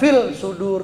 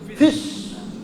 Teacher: Cirinya al-nya itu, l-nya itu, lamnya nggak kedengeran bunyinya. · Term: al-syamsiyah